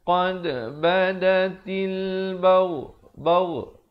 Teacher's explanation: Qad ada khalkhalah di situ, pantulannya.